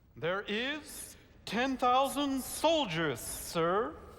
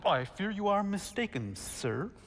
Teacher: You're making a horrible whistling sound. You have a sibilant S.